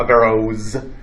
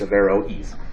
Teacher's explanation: the o and e are two separate vowels there's not a diphthong there